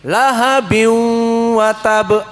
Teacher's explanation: Dibuka jadi lahabi wa tab, ada dengung lahabi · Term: idgham bi gunnah